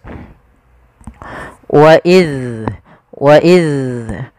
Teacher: ujung lidah kita menempel dengan gigi sari atas. Wa iz, dan dia punya sifat rakhawah, mengalirnya suaranya. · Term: zal